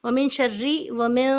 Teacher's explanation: تھوڑا ہولڈ کر کے نون کی آواز کو چھپا کے. چھپانے کا مطلب ہے زبان کی نوک اوپر نہیں لگائیں گے